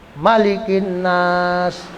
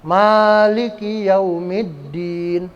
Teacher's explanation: Kalau surah An-Nas pendek ya, Malikin Nas gitu. Kalau ini panjang, Maliki Yaumiddin. Itu namanya mad tabi'i.